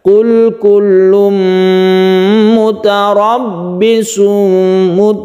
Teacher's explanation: Roknya agak tebalkan karena ini adalah tafkhim, roknya berfathah. Kemudian ada tasydid ba, langsungkan ke ba, tekan ke ba-nya.